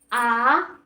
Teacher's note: पश्च स्वर मतलब पीछे के पिछले जीभ के जो पिछले हिस्से द्वारा स्वर बोले जाते हैं उसे हम पश्च स्वर कहते हैं